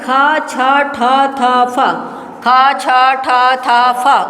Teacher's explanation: ये महाप्राण हो जाएगा ख छ ठ थ फ ख छ छ ठ थ फ बोल के देखिए हवा ज्यादा है ना ख छ, ठ, थ, फ ज्यादा निकल रहा है।